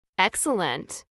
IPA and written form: ˈɛksələnt (excellent)